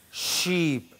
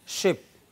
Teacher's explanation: moves upwards towards the heart palette you see here somewhere okay there is no closed contact but there is extremely narrow passage so that you have friction